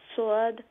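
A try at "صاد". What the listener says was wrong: अच्छा साद दाद, साद दाद, नहीं स्वाद नहीं, वावर आवाज नहीं सादे साद अलिफ दाल साद हाँ लेट्स আমি এখানে স্ক্রিনে লিখে দেখাই সাদ সাদ। সাদ আলিফ দাল হইল সাদ, हाँ आगे साद फरे नहीं, साद दाद नहीं, साद साद साद नहीं, साद नहीं, सीन तो नहीं, साद साद साद दाद द्वाद नहीं, द्वाद एखाने वाव तो नहीं मिस बेगम। दाद अलिफ दाल दाद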